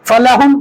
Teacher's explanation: میم ساکن ہا کے ساتھ ملائیں گے